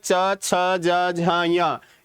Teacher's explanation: ये किससे बोला जा रहा है तालू से बोला जा रहा है